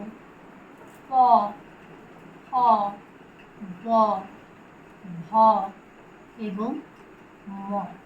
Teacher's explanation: ওষ্ঠ বর্ণ উচ্চারণ স্থান অধর এবং ওষ্ঠ পরস্পরকে স্পর্শ করে, অর্থাৎ উপরের ঠোঁট এবং নিচের ঠোঁট তারা পরস্পরকে স্পর্শ করে, নইলে এই বর্ণগুলো উচ্চারণ করা যায় না।